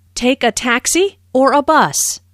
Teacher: notice the rising intonation on Taxi the first choice and falling intonation on bus the second choice